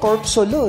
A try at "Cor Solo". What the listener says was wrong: Actually, it's silent P. Cor Solo.